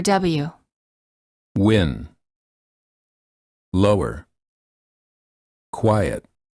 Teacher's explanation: the lips are rounded as for the vowel o as in moon and the air flows out through the lips the tongue is in the position for the vowel sound that